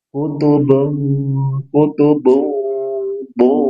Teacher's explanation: Ada tanwin bertemu dengan huruf qaf, maka ikhfa, samar. Tahan 2-3 harokat, dengungkan. Dan dengungnya dia tafkhim, tebal, karena qaf termasuk huruf isti'la.